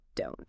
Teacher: For the negative don't, the vowel sound actually changes a bit. It sounds more like the O in own or boat